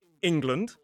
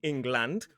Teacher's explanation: So we reduce the vowel from /a/ to a schwa.